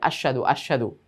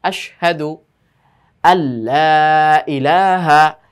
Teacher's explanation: এই আশহাদু আশহাদু শব্দটা কিন্তু পুরো বিকৃত হয়ে যায়। এই জন্য স্পষ্টভাবে এখানে উল্লেখ করতে হবে বা বুঝাতে হবে যে এখানে একটা শিনের পরে হা রয়েছে।